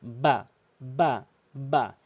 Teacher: দুই ঠোটের ভেজা অংশ মিলিত করে বা বা